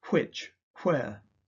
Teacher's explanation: In conservative RP, some speakers have a voiceless w, phonetically hw, in words such as which, where. This sound is still widely found in Scottish and American accents.